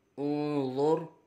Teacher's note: نون ساکن کے بعد حرف اخفا میں سے ضا آ رہا ہے، اخفا ہوگا، غنہ کر کے پڑھیں گے